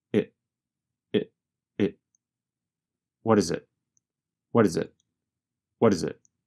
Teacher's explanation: The letter T in what changes to a sound closer to the letter D. And the word it goes by so fast that it becomes very reduced to just a vowel sound plus a very fast held T.